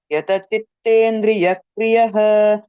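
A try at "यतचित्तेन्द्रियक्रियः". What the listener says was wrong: యా దగ్గర విసర్గ వినిపిస్తుంది నాకు. విసర్గ లేదు ఇక్కడ. యతచిత్తేంద్రియ క్రియః.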